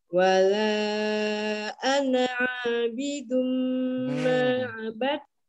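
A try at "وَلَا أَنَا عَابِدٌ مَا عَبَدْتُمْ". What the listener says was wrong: Jangan ditekan. Ana a, ana abidum. Jangan ditekan. Ana a. Ana a.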